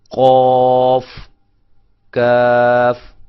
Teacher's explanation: قوف، کاف یہ زبان کی جڑ اور تالو سے ادا ہوتے ہیں. یہ ذرا بہت قریب جو ہے لحات ہوتا ہے، کوا جس کو ہم کہتے ہیں، یہ وہاں سے، اور یہ تھوڑا سا کوے سے اس لحات سے ہٹ کر منہ کے قریب تھوڑا سا آگے کی طرف جائیں تو وہاں سے کاف ادا ہوتا ہے.